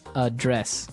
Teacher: But you pronounce it differently. So the verb address has the stress on the second syllable